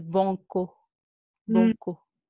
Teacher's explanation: Parce qu'ils nasalisent tous les voyelles qui sont à côté des N.